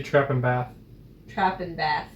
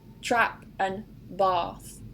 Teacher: up north we don't actually distinguish between trap and bath however in the south they do